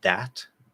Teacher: In this case, it's that, which is voiced. So we get a dental D, that. So you just hear flat, you push it out, that.